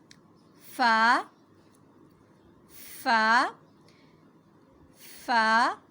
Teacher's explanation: اوپر کے دانت جب نیچے والے ہونٹ کی تری والے حصے سے ٹکرائیں تو ادا ہوگا فا